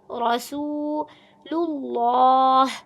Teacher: رسول میں را کو زبر، را کی زبر کو پر پڑھیں گے، سین کی پیش کو واو کی مد کے ساتھ ملا کر ایک الف کی مد کی مقدار کھینچ کے لمبا کریں گے